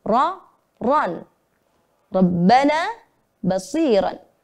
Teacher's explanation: Maka ro-nya dibaca tebal. Di fathah dan di fathah tanwin. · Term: tafkhim